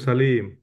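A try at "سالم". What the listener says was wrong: Salim, saja panjang Mas. Saja panjang, Salim.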